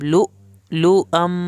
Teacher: لؤ پہ ہم نے جھٹکا لگایا، حمزہ کے اوپر جزم ہے